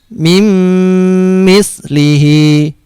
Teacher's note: Nah, ini nun sukun bertemu dengan huruf mim. Nun disukun ini seperti tidak ada ya. Dimasukkan ke huruf mimnya. Mimnya ditasdidkan.